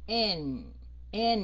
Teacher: mình đọc cái âm N với cái âm m làm sao mà các anh chị nghe cái lỗ mũi run run